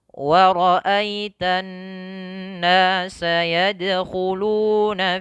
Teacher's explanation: nun bertasydid itu merupakan bacaan gunnah. Maka wajib ditahan 2 harakat.